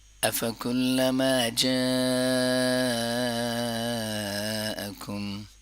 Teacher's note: جا کو لمبا کریں گے اور یہ بہت ضروری ہے، یہ مد متصل ہے۔ جب الف مدہ، واو مدہ یا مدہ یا کڑا زبر کڑی زیر یا الٹا پیش آ جائیں اور اس کے بعد حمزہ اس اوریجنل شیپ میں ہو تو مد متصل کہلاتا ہے اور اس کو لمبا کرنا ضروری ہے۔